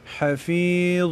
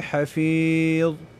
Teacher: یا ساکینه شو مخکې د یانه په فا باندې زیر دی نو په دې کې مد کېږي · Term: د یا مده